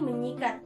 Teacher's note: bunyi es pada kata dasar sikat akan hilang